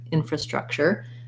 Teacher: first syllable stress with secondary stress on the struck